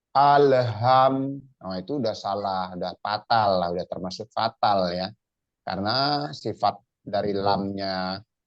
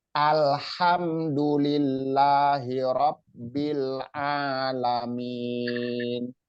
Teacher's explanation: H kecil pipih suaranya bersih ya dan banyak hembusan angin yang keluar berubah jadi H besar ya pindah makhrojnya karena apa hurufnya berubah